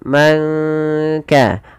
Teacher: menyamarkan suara nurnya kepada huruf kaf. Manka langsung kepada makhraj daripada huruf kaf dan ditahan dua harakat. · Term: ikhfa hakiki